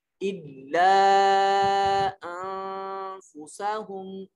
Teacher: آواز کو ناک میں لے جائیں گے کیونکہ حروف اخفا میں سے فا آ رہا ہے.